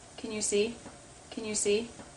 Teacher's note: can likes to reduce when it's unstressed to kn, K sound, schwa, N, kn.